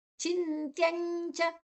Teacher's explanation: ಒಂದು ಸೊನ್ನೆ ಅನುಸ್ವರ ಅನುಸ್ವರದ ಉಚ್ಚಾರಣೆ ಮುಂದಿನ ಅಕ್ಷರ ಚ ಇದೆ ಚ ಜ್ಞ ಚ ವರ್ಗದ ಅರ್ಧ ಚ ವರ್ಗದ ಅನುನಾಸಿಕದ ಅರ್ಧ